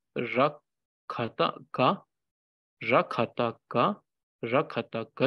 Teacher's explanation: Because it has this crown letter ra, the sound becomes more bold. Instead of ka, which is a subtle and soft sound, it becomes ga, which is more bold.